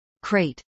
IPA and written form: kreɪt (crate)